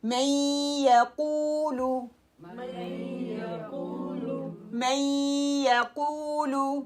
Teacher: یا کا مخرج پتہ ہے تالو کے ساتھ نہیں لگے گا, اوپر جائے گا اور تھوڑا سا فرق رہے گا. جیسے میں, اس میں نون کا ساؤنڈ بھی آ رہا ہے, یا کا بھی.